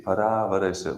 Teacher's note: Why para? Because a is longer.